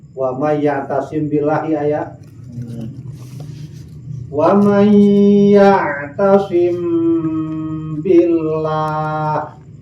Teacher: Ya'tasim billah aya mim sukun ngarepan ba, hukumna ikhfa. Oke, make guna panjangna 2 sampai 3 harakat tahan ta.